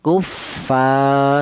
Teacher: Jadi fa dibaca matobi'i, alasannya ada alif yang didahului huruf yang berharokat fathah, panjangnya yaitu satu alif atau dua harokat atau dua ketukan